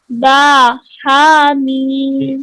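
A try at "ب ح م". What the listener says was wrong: हा को bottom throat से सीने से अदा करेंगे बाहामीम no no no no throat से नहीं सीने से बाहामीम आप थ्रोट से हा पढ़ रही हैं हा नहीं है ये वो तो पीछे गुजर गया हा बाहामीम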